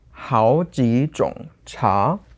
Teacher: So it's second, second, third, and then a normal second.